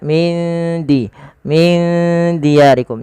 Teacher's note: huruf dal itu makhrajnya dari ujung lidah kita yang bertemu dengan perbatasan antara gigi atas dan gusinya